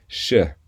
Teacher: out now the curve on top is pointing down sh because sh is pronounced a little further back in the mouth from CH